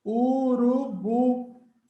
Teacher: Urubu. Bu é a sílaba forte.